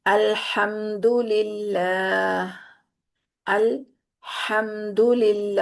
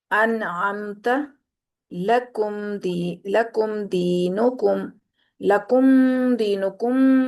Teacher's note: میم ساکن کی آواز کو ہم نے ظاہر کر کے پڑھنا ہے، اس کو چھپانا نہیں ہے، اس کو دوسرے کے اندر داخل نہیں کرنا، ٹھیک ہے؟ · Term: اظہار شفوی